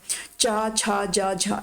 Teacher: यहां पर स्पर्श संघर्षी व्यंजन भी बोलते हैं ठीक है मतलब इनको बोलते वक्त ना थोड़ा घर्षण सा उत्पन्न होता है